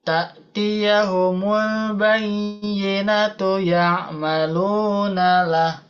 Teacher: Bayyinatu ya, sambung dan tidak panjang ya.